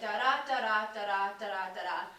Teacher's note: there are 10 beats per line, and they're in these groups of 2. The pentameter is like the little feet, and so it's like da da da da da da da da da da. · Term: iambic pentameter